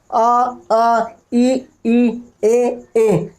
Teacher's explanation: तो ये जो स्वर है ये है आवृतमुखी, यानी वृत्त नहीं, गोल नहीं। ऐसे स्वर का उच्चारण जिनके बोलने में हमारा मुंह गोल नहीं होता